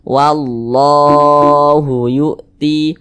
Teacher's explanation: ini namanya mad tabi'i, panjangnya 2 harokat. 2 harokat itu kira-kira sepanjang 2 ketukan. 1, 2. Wallahu yu'ti.